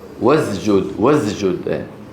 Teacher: خلط صوت السين بالزاي بحرف الزاي هذا موجود في بعض العاميات